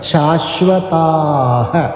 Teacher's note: ദീർഘമായിട്ട് താ എന്ന് ചൊല്ലി വിസർഗ്ഗം ചൊല്ലി അവസാനിപ്പിക്കുക